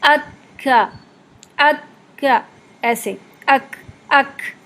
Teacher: اگر آپ آواز اور ہوا کو ایک ساتھ ملا دیں گے تو پھر کھا کی جیسی آواز آئے گی، ہا جیسی آواز آئے گی۔ ہا نہیں ملانا ہم نے اس میں، بلکہ ہم نے اس کو آواز کے ساتھ ساتھ اس میں ہلکی سی نرمی اور ایئر کو شامل رکھنا ہے۔